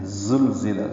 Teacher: زا تیز صفیر کی آواز سے ادا ہوتی ہے، زبان اوپر اور نیچے کے دانتوں کے بیچ میں آتی ہے اور جڑتی نہیں ہے، لگتی نہیں ہے۔